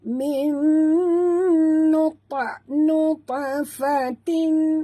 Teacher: huruf ta mati di tengah-tengah kalimah, ta bersifat qalqalah, jadi lantunkan dia